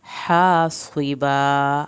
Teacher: हासिबा हा को हल्क से पढ़ना है, अलिफ पूरी अदा करनी है, स्वाद को पुर करके पढ़ना है